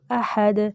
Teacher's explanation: आहद नहीं पढ़ना हमज़ा पे सिर्फ ज़बर है ना तो इसलिए लंबा नहीं करेंगे